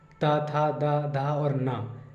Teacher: अब दंत तो आपको सबको पता है कि दंत में इनको बोलते, ये जो वर्ड है ना, ता, था, दा, धा और ना, इनको बोलते समय जीभ का अगला भाग हल्का सा दांतों में टच होता है